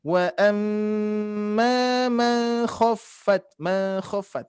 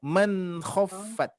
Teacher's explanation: di sini nunnya tidak disamarkan. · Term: idhar